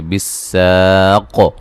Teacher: سین کو باریک سیٹی سے الف مدہ ہے، قاف کو موٹا ادا کریں گے.